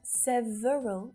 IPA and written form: 'sev (ə) rəl (SEVERAL)